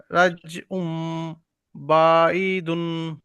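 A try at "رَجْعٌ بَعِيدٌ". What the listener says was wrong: বাটা টান হবে না, এই আইনটা ইয়ার মধ্যে আইনটা হবে, দেখেন রাজিউম বাঈদুম।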